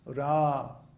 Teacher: the first A in Ram is long, so it's held for 2 beats. Ram. And then the A in the Ma is short, so it's Rama.